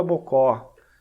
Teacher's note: percebe que o bo é breve e o có, ele é mais aberto e ele é mais longo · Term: O aberto